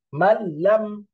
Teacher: গুনা করা যাবে না সরাসরি মিলে যাবে পরিষ্কার তারানে মাঝখানে ননটা সাইলেন্ট থাকতেছে মাললাম নন বাদ পড়ে একেবারে